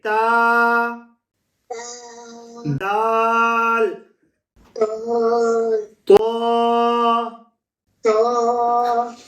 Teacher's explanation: They are pronounced when the tip or the edge of the tongue meets the roots of the two front teeth.